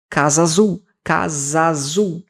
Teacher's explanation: O A do casa, do final do casa, se conecta com o A do azul.